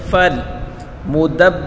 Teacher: دال کو با کے ساتھ ملا کر پڑھیں گے اور با کے اوپر سختی کریں گے